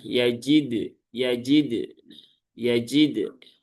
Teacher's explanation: Lebih tepat kepada bergoncang. Jadi hurufnya itu ada goncangan ketika diucapkan. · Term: kolkolah